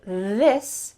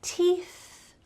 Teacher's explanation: a stream of air coming out. It's not voiced. All you hear is some air.